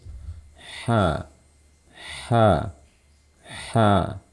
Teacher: Ada suara H yang mengalir dulu sebelum saya membuka mulut. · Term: sifat rokhawah